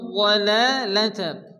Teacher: লামের উপর খারাজ জবর এক টেনে পড়তে হবে